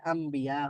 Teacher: ন নুন সাকিনের পরে আবার বা আছে তো এজন্য ন সাউন্ডটা ম সাউন্ড হয়ে গেছে